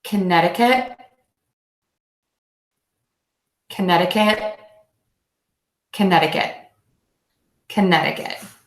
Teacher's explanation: exploiting that Chi at the end I'm not saying kinetic cut I'm actually just holding that T and I'm not exploding it and I'm doing that by keeping the tip of my tongue behind the back of my top front teeth